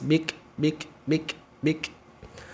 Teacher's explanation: maka ketika bunyi Kaf sukun hamesnya percikan saja percikan nafas